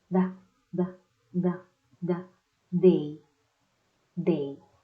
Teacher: In this sound, we are going to use the tip of our tongue and the roof our mouth, on top of our teeth